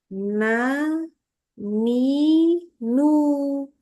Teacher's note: membaca huruf nun itu tidak disertai dengan hembusan udara